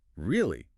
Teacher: if you're surprised your voice might go up at the end really but if you're skeptical it might go down then really